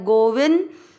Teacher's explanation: शब्द के बीच में जो बिंदी है उसका उच्चारण होगा आधा न गोविंद। द में मिक्स करेंगे गोविंद।